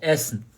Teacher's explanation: São duas consoantes, né? Então, a vogal anterior, ela soa curta e soa aberta.